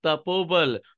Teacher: विसर्ग हटा और विसर्ग यहां पर ओ के रूप में परिवर्तित हो गया ओ के रूप में आ गया तपः प्लस बल तपो बल